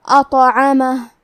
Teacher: یہاں بھی تو کا حکم ہے قلقلہ، تو ہم یہ حرف کو ہلاتے ہوئے یہ کلمہ کو پڑھیں گے